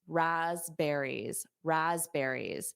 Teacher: So notice that P is not pronounced. Raspberries, raspberries.